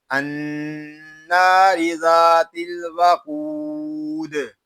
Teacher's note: وقف میں قاعدے ہوں گے قاف پر مد عارض دال ساکن میں کلکلا اور وقف بالاسکان